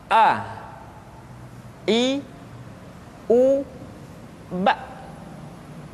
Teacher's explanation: Makhraj ketika mengucapkan huruf A berada pada tenggorokan yang terjauh.